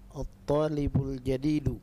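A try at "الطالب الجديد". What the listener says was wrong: Mumtaz.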